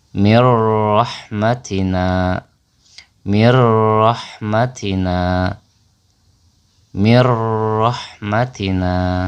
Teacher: Jadi nun sukunnya dilebur ke huruf ro dan ro-nya menjadi bertasdid atau ro-nya double.